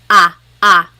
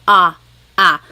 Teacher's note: in English, the letter A is very short, like bat and hat. We don't want it flat like that. We want it more open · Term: ah sound